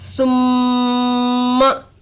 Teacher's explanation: मीम पर तशदीद आकर है, गुन्ना होगा। मीम की आवाज को थोड़ी देर नाक में छुपाने को गुन्ना कहते हैं। गुन्ना का मिकदार 1 अलिफ का बराबर है।